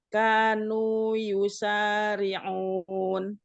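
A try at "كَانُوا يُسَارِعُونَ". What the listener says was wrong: Kanu. K-nya tipiskan lagi.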